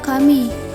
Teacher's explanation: di tengah kata fonom m dan n ini masuk ke dalam bunyi nasal yakni bunyi yang dihasilkan oleh resonansi yang terjadi pada rongga hidung